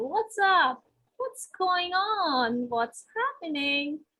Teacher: Remember to use a light rising intonation when you are greeting the people. It should show some happiness, some energy when you are talking to them, right?